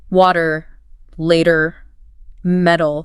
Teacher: The T just softens between vowels. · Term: flap T